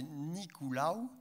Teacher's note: en occitan c'est Nicolaou en général avec donc une diphtongue finale